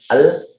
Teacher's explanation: Nah ini maksudnya lam itu makhrajnya ada di lidah, di ujung lidah